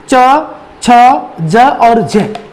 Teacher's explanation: स्पर्श यानी छुएगा और साथ साथ हवा को संघर्ष भी करना पड़ेगा, स्ट्रगल भी करना पड़ेगा · हमने पढ़ा है कि जीभ के जो ऊपर का भाग है उसको हम तालु कहते हैं। अब जीवा हल्का हल्का तालु को स्पर्श करेगा, साथ ही जो पीछे से हवा आएगी उस हवा को भी बाधित होना पड़ता है, संघर्ष करना पड़ता है, इसलिए इन वर्णों को स्पर्श संघर्षी व्यंजन कहा जाता है।